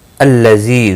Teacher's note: الذی زی یا مدہ ہے، 1 الف کے برابر کھینچ کر پڑھیں گے۔